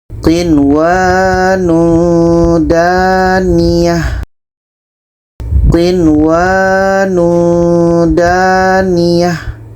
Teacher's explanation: Maknanya kalau Izhar adalah Nun jelas, Wawu jelas dan tidak ada dengung. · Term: Izhar wajib